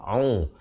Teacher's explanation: ain, makhrajnya di pertengahan kerongkong